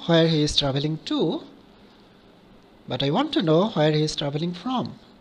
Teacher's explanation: is traveling from so here the emphasis is on two from accent is also on to and from because you want to have a contrast between these prepositions